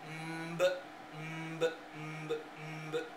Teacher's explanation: en la m los labios tienen contacto hay un contacto total de los labios